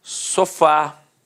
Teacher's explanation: Repare que a sílaba tônica é a última e é terminada de fato em A. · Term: oxítona